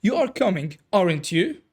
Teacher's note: we have the rising intonation. You are uncertain and genuinely checking.